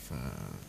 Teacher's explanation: Fa itu makhrajnya ujung 2 gigi atas bertemu dengan bibir bawah bagian dalam. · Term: huruf fa